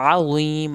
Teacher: عظیم عین کو حلق سے پڑھیں گے